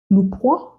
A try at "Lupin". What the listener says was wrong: Lupin. It's not a W, it's Lupin. You said Lupin. It's not Hua, it's Lupin. So it's spelled Lupin. Lupin. It's French, so it's not actually pronounced like that. It's Lupin.